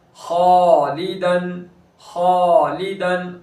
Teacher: खालिदन, खालिदन, खा पूर हर्फ है और फिर मुस्तालिया में से है, अलिफ मद्दा हो रहा है, खा पूर हुआ तो अलिफ भी पूर करेंगे